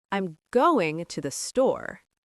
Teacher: Only push the important words, store and going. Everything else, make it tiny. · You just swallowed the words to and the.